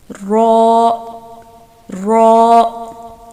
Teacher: रॉ, अब इसका मखरज क्या होता है कि ज़ुबान की नोक की पुश्त को, ज़ुबान की नोक की पुश्त को ऊपर के सामने वाले 4 दांतों के मसूड़ों से लगाकर मोटी आवाज़ में अदा किया जाता है रॉ। अब देखिए नोक जो है ज़ुबान की वो बुलंद नहीं हो रही, नोक की पुश्त, नोक से थोड़ा सा पीछे वाला हिस्सा बुलंद होता है, ऊपर के सामने वाले 4 दांतों के मसूड़ों से लगता है।